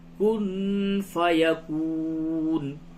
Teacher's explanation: زبر زیر پیش کو جلدی پڑھتے ہیں اور کھڑا زبر کھڑی زیر الٹا پیش کو تھوڑا کھینچ کر کے پڑھتے ہیں، تو اس طرح ہوگا فإنما يقول له کن فیکون، نون ساکن کے بعد فا ہے، جگہ پہ اخفا ہوگا